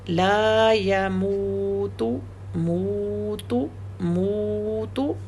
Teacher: موت میم کی حرکت 2 ہے کیونکہ اس کے ساتھ واو ہے، اور تا کی حرکت 1 ہے کیونکہ اس کے ساتھ واو نہیں ہے. لا يموت موت موت، دیکھ رہے ہیں نا میم کی حرکت 2 ہے اور تا کی 1 ہے.